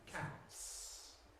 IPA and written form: kæts (cats)